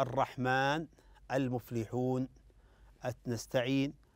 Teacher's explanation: المد العارض السكون في ثلاث اوجه وقفا القصر هو مقداره حركتان والتوسط مقدار اربع حركات والاشباع مقدار ست حركات